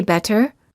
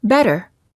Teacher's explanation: when a T is between two vowels it's generally pronounced like a fast D sound